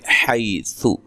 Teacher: حی یا لین ہے، سا کو نرم ادا کرنا، لمبا نہیں کرنا